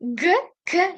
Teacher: G k eʼtibor bersangiz orqaroqdan chiqyapti. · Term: tilor orqa undoshi